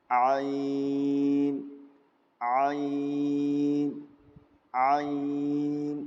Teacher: درمیانی حلق سے جو ہا کا مخرج تھا وہی مخرج عین کا بھی ہے، دونوں کے نکلنے کی جگہ ایک ہی، یعنی درمیانی حلق، بیچ کا حلق.